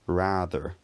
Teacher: the vowel in words like rather is a long front vowel